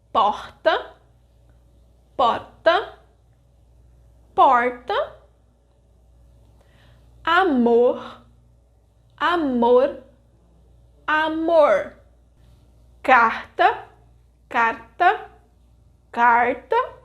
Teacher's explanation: in Rio de Janeiro, the final R and S are pronounced as H and Sh, while in São Paulo they are pronounced as R and S. And in Minas Gerais, they are R, and S, respectively.